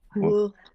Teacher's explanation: It's a W, high tone U.